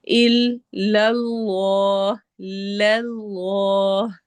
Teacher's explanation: لام کو باریک رکھنا ہے، لیکن جب لام کو آگے لام سے ملائیں گے تو وہ ہیوی ہو جائے گا اور الگ سے بھی جب لام پڑھیں گے تو وہ بھی ہیوی ہوگا.